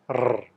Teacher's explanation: itu berarti huruf r atau huruf r kalau dalam bahasa Indonesia ketika kita mengucapkan R lidah kita bergetar kuat · ketika kita mengucapkan R, lidah kita bergetar kuat, R. Tapi dalam bahasa Inggris, huruf R itu lidahnya tidak bergetar. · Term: trill